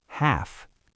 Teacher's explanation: Half ends in the unvoiced F sound. Short vowel